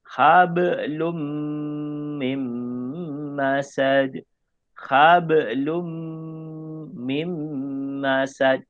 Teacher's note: Masuk kepada huruf mim. Tanwin dengan mim, hukum idgham ma'al hunnah. Tetapi dengung dia dekat mim.